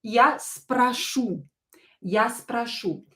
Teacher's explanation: the stress is on the last vowel